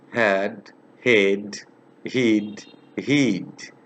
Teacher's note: had head heat heat my lips are flat it's unround not round